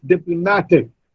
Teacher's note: It's not diplomatic, it's diplomatic. Ma, the third syllable receives the stress. And dip, the first syllable receives the secondary stress. The primary stress is on ma.